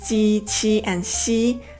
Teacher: the tip of my tongue, this part, stays steady the entire time, touching the back of my lower teeth. The middle part of my tongue, this part, forms an arch in my mouth.